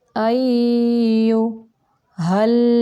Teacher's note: या अय्यु, या को नरम तरीके से पढ़ेंगे और थोड़ी देर रुकेंगे क्योंकि यह मुशद्दद है, इसलिए अय्यु हल, हा को हलक का वो हिस्सा जो सीने की तरफ है वहाँ से निकालेंगे